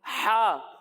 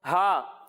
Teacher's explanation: जब हम हा की अदायगी करेंगे तो इसे हम हलक के दरमियाने हिस्से से पढ़ेंगे, और जब हम हा की अदायगी करेंगे तो इसे हम हलक के निचले हिस्से से पढ़ेंगे